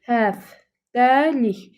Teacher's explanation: kar samit t qarşılığı kimi d tələffüz olunur